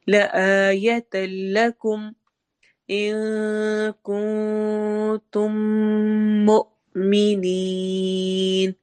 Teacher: ان میں اخفا ہو رہا ہے، کن میں بھی اخفا ہو رہا ہے، تم میں میم پر ادغام شفوی ہو رہا ہے اور مؤمنین مد عارض وقفی ہے.